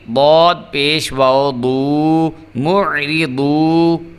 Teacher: ضاد جو ہے یہ حروف مستعلیہ میں سے ہے، اس کو ہم نے پر کر کے پڑھنا ہے، موٹا کر کے پڑھنا ہے۔